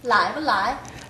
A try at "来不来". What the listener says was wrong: 来不来 네, 아이 발음은 다시 한번 연습하십시오. 아이 발음이 정상적이 아니에요. 라이 아이 아니야 아이 아이 来不来